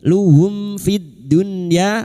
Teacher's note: mim sukun bertemu fa idhar syafawi mim sukun dibaca jelas tanpa mendengung · lam takrif yang bertemu dal idgham syamsiyah